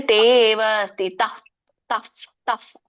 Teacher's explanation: ಫ ಹೇಳ್ತೀವಲ್ಲ ತುಟಿಯಿಂದ ಎರಡು ತುಟಿ ಕೂಡಿಸಿದಾಗ ಫ ಏನ್ ಬರುತ್ತಲ್ಲ ಆ ಫ ಬರುತ್ತೆ